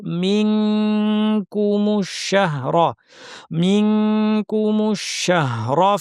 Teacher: নুন সাকিনের পর কাফ এসেছে, জিহ্বাকে পুরোপুরি কাফের মাখরাজে লাগিয়ে নাক থেকে গুন্না করব। মিনকুমুশ শাহরা, মিনকুমুশ শাহরা, রফা র এর পর যেন টান না হয়। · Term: ইখফার হরফ